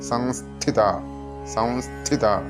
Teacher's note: സംസ്ഥിത എന്നുള്ളത് അനുനാസികം ചേർത്തിട്ട് സംസ്ഥിത എന്ന് ചൊല്ലാറുണ്ട്